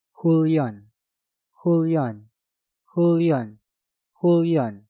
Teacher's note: Hun diakhiri dengan nien, setelah itu diikuti kata yang diawali dengan real. Maka hun kita rubah menjadi hul. Maka cara pengucapannya menjadi Hulyon.